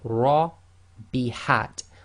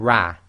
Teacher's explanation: heavy, full mouth, i.e. lifting up the posterior of the tongue, making your mouth more full, the lips go slightly round, so this will be Ra. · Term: tafkhim